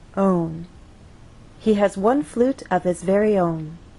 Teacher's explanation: on that final content word our voice will glide down